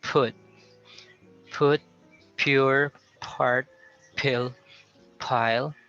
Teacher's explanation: we also aspirate the p in the beginning